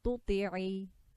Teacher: This ta here is letter of tafkhim, so the tongue will be raised at the back.